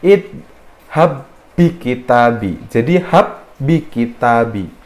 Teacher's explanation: jadi nggak usah di Qalqalah kan dia langsung masuk ke huruf setelahnya seperti ada tasydidnya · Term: idgham mutamatsilain